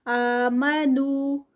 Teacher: اعوذ باللہ من الشیطان الرجیم بسم اللہ الرحمن الرحیم وَلَوْ أَنَّهُمْ آمَنُوا وَاتَّقَوْا لَمَثُوبَةٌ، لو میں جو ہے وہ واو لین ہے، انہم ان جو ہے وہ نون مشدد ہے، غنہ ہوگا یہاں پر۔ آمنو آ پہ 2 کاؤنٹس، نو پہ 2 کاؤنٹس، ایک الف مد ہے اور دوسرا واو مد۔ وَاتَّقَوْا یہاں پر بھی قو میں واو لین ہے، واو سے پہلے زبر ہے، واو سے پہلے پیش ہو تو وہ واو مد ہوتی ہے، اور یہ یہاں پر زبر ہے تو یہ جو ہے وہ لین ہے، واو لین۔